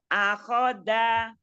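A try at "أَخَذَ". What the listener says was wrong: Za. Bukan da. Tapi zan.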